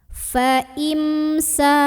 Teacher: Fa'im, di sini ada idhar syafawi karena ada mim sukun yang menghadapi huruf selain mim dan ba, yaitu huruf sin. Maka baca mimnya ini jelas, tidak perlu kita tahan.